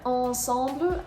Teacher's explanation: If you go to the next word, ensemble, again, there are 2 nasal sounds, but this time it is the en sound. And neither the N nor the M are pronounced. You're not saying ensemble.